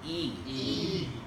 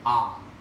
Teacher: When you say e, your throat is much more closed than when you say ah.